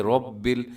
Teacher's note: را موٹی ہوتی ہے، رب ایسے منہ بھر کے آپ نے اس کو پڑھنا ہے۔ آگے ہے عالمین، آئین کا خیال رکھنا ہے خاص طور پہ، اکثر لوگ عالمین کر دیتے ہیں، یعنی آئین کی جگہ حمزہ ہو جاتا ہے۔